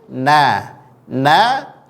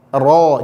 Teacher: punggung lidahnya lebih besar menempelnya ro ro dibandingkan dia huruf na na lebih kecil punggung lidahnya ini menempel sedangkan ro dia lebih tebal punggung lidahnya menempel